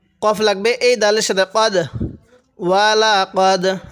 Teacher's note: এই কফটার মধ্যে একটু ধাক্কা দেব, কারণ এটা তো কলকলার হরফ। কলকলা হরফ হলো 5টি, কফ তো বা জিম দাল, তো দালটা কলকলা হরফ, এই জন্য একটু ধাক্কা দিয়ে পড়ব।